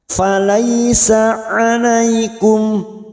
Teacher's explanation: Fathah bertemu ya sukun, huruf layin atau biasa yang disebut dengan huruf lin. Fathah bertemu ya kita lunakkan.